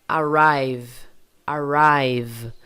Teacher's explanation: o v tem que vibrar porque esse é o som dele · Percebe que vibra tudo, do início ao fim? Se o seu V não estiver vibrando, então provavelmente você está pronunciando o seu V como som de F.